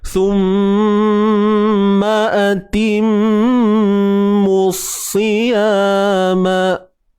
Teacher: Mim yang bersabdu kena dengung.